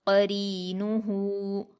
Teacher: غاوون غاوون غاوون، قرینہ، قاف پر حرکت ہے، اس کو جلدی پڑھیں گے، اور قاف حروف مستعلیہ میں سے اس لیے اس کو پر پڑھا جائے گا۔ را پر یا مدہ ہے، اس کو 2 حرکات کھینچ کر باریک پڑھیں گے۔